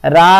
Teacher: इसमें क्या होता है देखिए ह्रस्व स्वर का 3 गुना समय लगता है। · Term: प्लुत स्वर